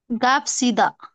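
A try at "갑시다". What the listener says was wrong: हाँ इसे गाप नहीं बोलना है, खा बोलना, खा सा, खाप सीधा।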